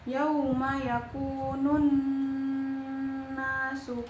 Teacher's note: cara bacanya dengung dengan tiga ketukan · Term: ghunnah